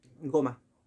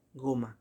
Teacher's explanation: Go es la sílaba tónica y ma es la sílaba átona